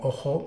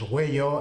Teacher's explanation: palabras que, por ejemplo, en castellano no diptongan como ojo, pues en aragonés es huello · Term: diftongación